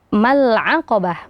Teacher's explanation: sini juga harusnya dibaca panjang Mad thai'i dua harakat Akan tetapi karena setelahnya huruf sukun maka Mad thabiiinya dihilangkan